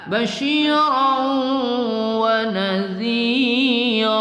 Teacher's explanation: Basyiran wa nadhira basyiran ra berbaris tanwin bertemu waw kita dengungkan pada idgham ma'al gunnah ya. Basyiran wa nadhira, jangan wa nadhiran ya, wa nadhira ra kita baca pada mat'i waw ya.